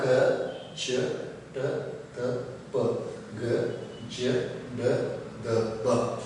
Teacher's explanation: ಇಲ್ಲಿ ಅಲ್ಪ ಪ್ರಾಣಗಳು ಅಂದರೆ ಇಲ್ಲಿ ಕಡಿಮೆ ಒಂದು ಉಸಿರಿನಿಂದ ಉಚ್ಚರಿಸುವಂತಹ ಅಕ್ಷರಗಳನ್ನು ನಾವು ಅಲ್ಪ ಪ್ರಾಣವನ್ನು ಹೆಸರೇ ಸೂಚಿಸುವಂತೆ ಇಲ್ಲಿ ಅಲ್ಪ ಪ್ರಾಣ ಕಡಿಮೆ ಉಸಿರಿನಿಂದ ಉಚ್ಚರಿಸುವಂತಹ ಅಕ್ಷರಗಳನ್ನು ನಾವು ಅಲ್ಪ ಪ್ರಾಣವೆಂದು ಕರೆಯುತ್ತೇವೆ.